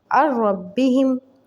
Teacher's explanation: عین کو ہم نے رو سے ملایا، جوائن کیا، لیکن ہم نے ناک میں آواز نہیں نکالی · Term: ادغام وداؤٹ غنہ